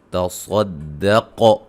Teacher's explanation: صاد کو موٹا قاف کو موٹا اور قاف پہ قلقلہ